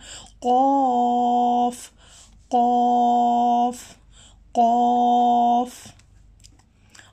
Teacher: जो क़ौफ़ है ये मोटा हुरूफ है, हमने क़ौफ़ को मोटा पढ़ना है। ये हैवी साउंड है क़ौफ़। क़ौफ़ है, क़ौफ़ को हमने गले के ऊपर से अदा करना है।